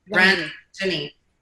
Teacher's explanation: The intonation is on the first vowel.